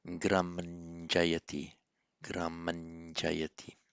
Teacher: it's pronounced as a palatal N because of the following J